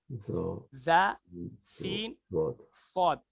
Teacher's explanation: जी next, हुर्फ सफरिया, मखरज number 14। जबान की नोक जब ऊपर नीचे के अगले दोनों दांत आपस में मिलते हैं तो इससे ज़ा, सीन, सौद निकलता है।